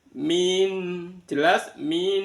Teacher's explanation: Kafaru kafaru lah di depan ee ro berharakat domah ada wau sukun dibaca mad thi kafaru terus min ah lah di sana ada nun sukun bertemu dengan alif maka dibaca izhar halq min jelas min sampai sempurna bunyi n